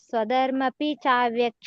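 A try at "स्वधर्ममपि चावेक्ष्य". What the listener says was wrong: ಸ್ವಧರ್ಮಮಪಿ, ಅಲ್ಲಿ ಸ್ವಧರ್ಮಂ ಅಪಿ ಅಂತ ಬರ್ತದೆ. ಸ್ವಧರ್ಮಪಿ ಹೇಳ್ಬೇಡಿ. ಸ್ವಧರ್ಮಮಪಿ ಚಾವೇಕ್ಷ. ಸ್ವಧರ್ಮಂ ಅಪಿ ಅಂತ ಬರುತ್ತೆ, ಅದು ಒಟ್ಟಿಗೆ ಸ್ವಧರ್ಮಮಪಿ.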